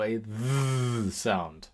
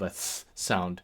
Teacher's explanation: this would have made a TH sound as in English then, so a voiced dental fricative, so a th sound.